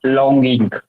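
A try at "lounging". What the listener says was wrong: It is not longing, it is lounge. Yeah, Loung.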